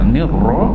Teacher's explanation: Ra tu kena tebal bagi atas.